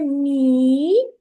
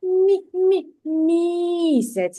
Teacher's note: якщо ви чуєте мі тоді звук м буде м'якеньки